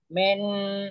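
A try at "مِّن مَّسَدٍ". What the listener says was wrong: Enggak ada nunnya langsung. Mim.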